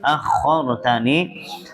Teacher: akhortani, ro-nya ditebalkan ya